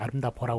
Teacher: 그래서 여기 뒤에 이제 그 어가 결합을 했을 때 그때 그 비읍이 오나 우로 바뀌지 않습니까? 비읍 불규칙은 비읍이 그대로 넘어가가지고 아름다버가 되는 것이 아니라, 물론 경상도 사투리에서는 아름다버라고 그러죠